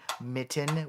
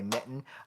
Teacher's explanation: There are some glottal stops in English speaking, like when you say the word mitten, we don't actually say the T